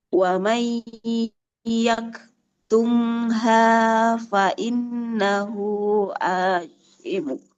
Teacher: Wa man yaktumha Tidak wamang. Nun sukun bertemunya itu bukan ikhfa, tidak wamang, tapi wamay yaktumha dia jadinya idgham.